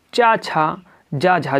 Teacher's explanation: चा छा जा झा जो है वह तालब ध्वनियाँ है